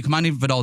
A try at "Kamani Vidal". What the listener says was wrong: Vidal? Think of it as a Videl as opposed to AL, and it helped me.